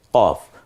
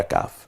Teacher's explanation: কয় বফলা দিয়ে, এটা গম্ভীর আওয়াজে জিহ্বার একেবারে গোড়া থেকে কফ, পরেরটা কাফ